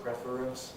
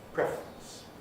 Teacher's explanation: this word, again, can be pronounced as 3 syllables, preference, or as 2 syllables, preference.